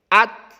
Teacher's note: perhatikan tak ujung lidah dengan pangkal dua gigi seri atas